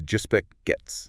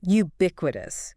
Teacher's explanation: stress on that second syllable, bic